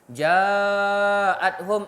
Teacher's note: 4 harakat mad wajib muttasil. Amalan kita 4 harakat.